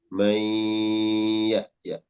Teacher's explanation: Nun sukun bertemu ya, mudgham. Nunnya diidghamkan ke ya dan disertai dengung.